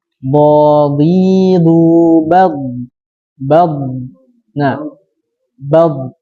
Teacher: huruf dha dalam keadaan sukun itu lidahnya tetap di atas · bergeraknya lidah ke depan setelah tepi lidah menempel pada gigi geraham atas. Ya, hingga ujung lidah menyentuh pangkal gigi atas yang disertai adanya udara yang menekan dari belakang lidah. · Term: istitalah